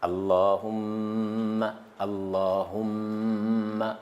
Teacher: Si vous voyez le tashdid sur mim, il faut prolonger un peu. On prolonge, on reste un peu sur mim.